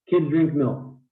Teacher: three content words three stressed syllables pretty simple